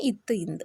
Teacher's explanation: நாவின் நுனி மேல்வாய் பல் அடியின் படுவதால்